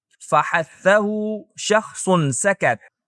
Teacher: तो जब हम कहते हैं कि किसी हर्फ में हमस की सिफत पाई जाती है तो हमारी मुराद यह होती है कि वह हर्फ वोकल कॉर्ड्स को लजिश दिए बगैर पैदा होता है और उसकी आवाज की अदायगी के साथ सांस बाहर आती है